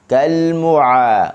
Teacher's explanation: huruf ain, halqum tengah a. Jangan baca kalmu'a, mu'a, naik ke hidung, tak boleh.